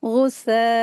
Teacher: नून साकिन की आवाज़ को जाहिर करके पढ़ेंगे। गुस्साअन, इस तरीके से इसको पढ़ेंगे, मद्दे वाजिब अप्लाई करेंगे, 4 हरकत खींच के पढ़ेंगे। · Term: इजहार